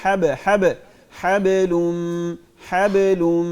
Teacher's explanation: बा पे पे कलकला करेंगे